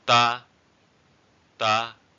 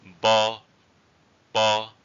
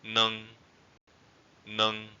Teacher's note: And the last tone is the mid-level tone.